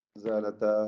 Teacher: 4-5 ഹറക്കത്തിന്റെ അളവിൽ അലിഫിനെ ദീർഘിപ്പിക്കൽ അനുവദനീയമാണ് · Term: മദ് മുൻഫസിൽ ജായിസാണ്